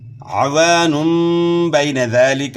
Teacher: عین کی آواز گلے کے درمیان سے نکالنی ہے، یعنی عوان نہیں پڑھنا، عوان پڑھنا ہے، الف مدہ ہے، عین کے بعد گلے کے درمیان سے ہے۔